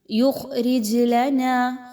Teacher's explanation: خا موٹا حرف ہے، اس کو موٹا کر کے پڑھیں گے، باریک نہیں پڑھنا۔